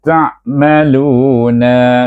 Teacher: huruf ta yang dia tekan pada antara gusi dengan gigi kacip atas. Letak ta tu, kemudian terus bunyi sambung dengan ain pertengah halkum.